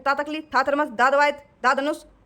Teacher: त तकली वाला जो है वो अपना दंत में आ गया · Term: दंत ध्वनि